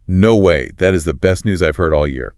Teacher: No way should be delivered with a high excited pitch and immediately followed by a positive affirmation.